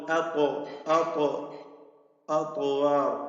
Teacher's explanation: ഇത്ബാഖിന്റെ ഹർഫാണ്, ഇസ്തിഅലാഇന്റെ ഹർഫാണ്, തഫ്ഖീം ചെയ്ത് ഉച്ചരിക്കേണ്ട അക്ഷരമാണ്